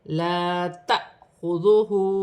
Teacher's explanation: ذال نرمی والا حرف ہے، پیش کی حرکت ہے ، ہا پر الٹی پیش ہے، ایک الف کی مقدار کھینچ